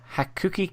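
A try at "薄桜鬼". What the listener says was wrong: Oh, there's another U in there. Okay, in that case, it's Hakuoki.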